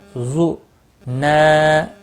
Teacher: زو کو کھینچنا نہیں، نا کو کھینچنا ہے۔ زو کیونکہ یہ حرکت ہے خالی۔ · الف مدہ ہے، ایک الف کے برابر کھینچ کر پڑھیں گے۔ زو کو کھینچنا نہیں، نا کو کھینچنا ہے۔